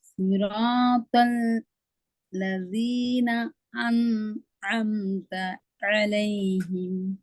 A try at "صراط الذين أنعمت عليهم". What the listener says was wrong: உங்களோட இன்னும் அன் தான் வருது. அன் அன் என்று தான் வருது. தான் வருது. அன் அன் அன் அல்ல, அன் என்று வாரது அல்ல, ஆ என்று போறது பிழை. அன். அதுக்கு நீங்க நல்ல லாங்குவேஜ் இங்கிலீஷ். இங்கிலீஷ்ல நாங்க அந்த இதை எப்படி வாசிப்போம்? ஆ புக். அப்படியா ரீட் பண்றேன், எப்படி சொல்றது? ஆ book. Is it correct? ஆ book, ஏ book, which one correct? ஆ book, ஏ book, which one correct? ஆ book, that's wrong.